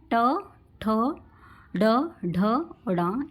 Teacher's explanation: Next है आपका मूर्धन्य, जिसमें जो आपकी जीभ है, जिह्वा थोड़ी सी मुड़ जाती है, वो आपके मूर्धन्य व्यंजन होते हैं। उल्टी हुई नोक का निचला भाग मूर्धक से स्पर्श करता है, ये मूर्धन्य व्यंजन है।